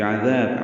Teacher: عین وسط حلق، ذال نرمی سے پڑھیں گے